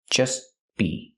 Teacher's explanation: We hear the T in just as a stop T between consonants, so you don't really hear it.